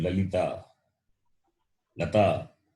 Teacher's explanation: La, when you say the tongue touches the base of the upper teeth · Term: dental